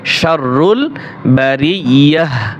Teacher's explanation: শাররুল বারিয়াহ, এই তা হরফ হা হয়ে যাবে। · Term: ওয়াকফ